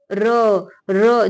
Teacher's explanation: जब र का उच्चारण आप करेंगे तो जिव्या कंपन होने लगेगी